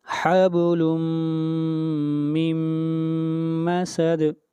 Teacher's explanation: دوبارہ نون ساکن کے بعد میم آ رہا ہے تو ادغام مع الغنہ